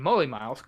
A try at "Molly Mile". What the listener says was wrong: You don't say Moly Mile. It's not Holy Moly. Like Valley.